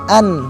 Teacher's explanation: huruf nun tersebut berada di ujung lidah kita dan berada di atas gigi atau di gusi bagian atas